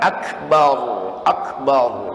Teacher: Terus akbarnya, ro-nya ditafimkan, ditebalkan.